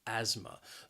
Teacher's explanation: who would have difficulty breathing you would say they have asthma the word has two syllables and the stress is on that first syllable that second syllable has that schwa again that uh sound asthma